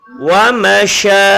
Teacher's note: dia sifatnya namanya tafashi, angin banyak keluar